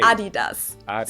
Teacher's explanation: they were referring to because they usually pronounce it Adidas and in Germany we say Adidas because the accent goes to the a